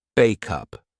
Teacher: sounds so two separate words will sound like one word backup we take the sound from back the last sound and transfer it to the next sound up